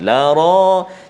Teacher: ra baris atas ada mat lagi dengan dia, jadi memang tebal bacaannya. La ra, jangan baca tipis.